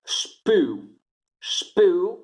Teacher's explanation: E la S è sorda, perché P è sordo